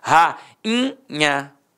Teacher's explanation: Rainha. O i ficou o quê? Nasalizado.